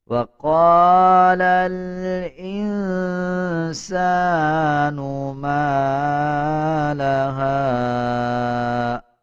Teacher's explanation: سین کے اوپر دیکھیں زبر ہے اور زبر کے بعد الف آ رہا ہے، 1 سیکنڈ لمبا کر کے پڑھا جائے گا